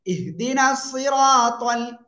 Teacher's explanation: এই যে রর উপরে জবর মোটা আওয়াজে পড়তে হবে, আর জবরের বাম পাশে খালি আলিফ এক আলিফ টেনে পড়তে হবে।